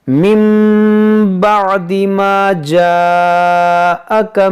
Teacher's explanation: نون ساکن کے بعد با ہے، تو یہاں پر ہم اقلاب کریں گے